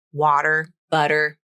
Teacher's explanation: Other forms of English may use a true T sound in water, but in American English, it's water with a flap.